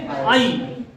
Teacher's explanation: और जब इसको पढ़ेंगे तो इसमें आ या आ, छोटा या बड़ा दोनों कर सकते हो, ठीक है ना, प्लस बड़ी ई, ये दोनों मिलके क्या बने हैं, आई। इसको ए नहीं बोलते, इसको आई बोलते हैं, क्योंकि अंत में ई का उच्चारण करना होता है आपको।